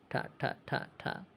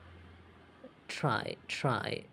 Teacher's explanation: And next section seven continent is a retroflex. The tongue curves back to the pallet. Front part of the roof of the mouth.